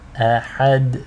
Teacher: the hamza here is light and thin. The dal has qalqala.